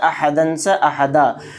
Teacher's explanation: 2 زبر پر وقف کرنا ہو تو 1 زبر کے ساتھ الف پڑھا جاتا ہے